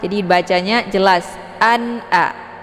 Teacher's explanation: An a adalah ada tanwin kemudian bertemu dengan hamzah. Jadi ini merupakan bacaan idhar.